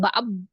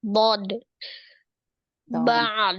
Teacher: Sisi lidahnya ketemu dengan geraham. Enggak mengatupkan kedua bibir, bukan ba.